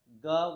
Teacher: ग वर्ण का उच्चारण होता है कंठ से होता